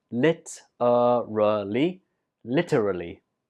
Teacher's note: And the stress is on the 1st syllable.